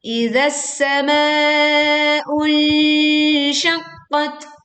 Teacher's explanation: kita menyamarkan bunyi nun sukun dengan membentuk makhraj shin saat kita membaca nun sukunnya. Dan ini termasuk bacaan sengau atau dengung, maka dibaca dengan menyempurnakan dengungnya dan tidak tergesa-gesa.